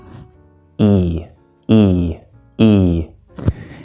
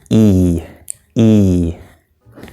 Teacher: because of that slightly different position but again going back here mouth is very closed using the front part of the tongue in English we also often pull the lips back like this like we're smiling